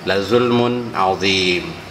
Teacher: Inna syirka la zulmun mun, ini izhar karena ketemu dengan huruf ain.